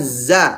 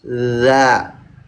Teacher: Kalau enggak maju jadi za, kalau maju jadi dza. Gitu. Itu dadi makanya saya pakai rumusnya itu Z tambah ujung lidah.